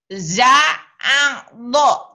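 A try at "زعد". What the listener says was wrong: A-nya masih kurang ini ya, masih bau ain. Ainnya masih bau ketuker-tuker nih. A-A, si A-A-Ari, A-A, Za-A, Za-A-Do.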